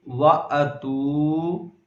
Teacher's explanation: واو مدہ ہونے کی وجہ سے ہم نے لمبا کیا